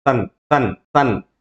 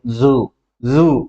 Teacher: ఈ యొక్క సా sound పలుకుతున్నప్పుడు vibrate అవ్వలేదు కాబట్టి అది వాయిస్లెస్. ఈ జూలో జెడ్ పలుకుతూ ఉన్నప్పుడు మనకి ఏమైందంటే ఇక్కడ వైబ్రేట్ ఒకలాంటి బజ్జింగ్ వైబ్రేషన్ కలుగుతూ ఉన్నట్టు అనిపిస్తుంది కాబట్టి దాన్ని మనం వాయిస్ సౌండ్ అంటాం